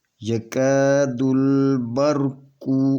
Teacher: یہ یکاد البرق، یہ الف ہے، الف سے پہلے زبر ہے، تو یہ الف مدیہ ہے، تو اس کو دو حرکت کے برابر کھینچ کر پڑھیں گے۔ یکاد، یہ الف نہیں پڑھا جائے گا، یہ دال لام کے ساتھ ملا کر پڑھیں گے